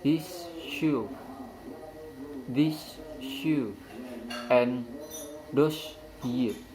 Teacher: And the next is alveolar fricative assimilation. The alveolar fricative may become post-alveolar fricative, and z may become z if followed by palatal approximant y.